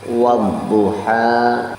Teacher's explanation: Nah, ini ada di akhirnya ada alif maksurah atau sering orang mengenal dengan alif bengkok. Ha di situ adalah panjang 2 harokat, itu adalah mad tabi'i.